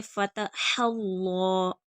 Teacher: अल्लाह का लामपुर पढ़ा जाएगा क्योंकि पिछले हर्फ हा पर ज़बर है। फ़तहल्लाह, हा पर पेश है, जब हम वक्फ करेंगे तो हा को साकिन कर देंगे।